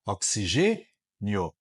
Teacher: tem o circunflexo o o e tem o timbre fechado oxigênio o i é fraquinho o o é forte nós chamamos o i de semivogal e o od vogal e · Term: ditongo crescente